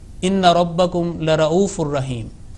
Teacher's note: And where Lam with Fatha in the meaning of sure or certainly, it must not be prolonged, otherwise the meaning would change.